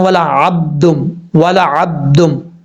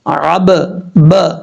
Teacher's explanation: دونوں ہونٹ آپس میں ملیں گے اور فوراً واپس چلے جائیں گے تو یہ قلقلہ ہوتا ہے